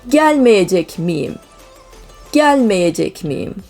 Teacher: again we have our semivowel as a result of double vowel